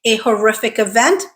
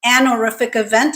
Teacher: I always pronounce it with the h, so I always say a horrific event, but an horrific event is also considered correct, if that's how you pronounce it.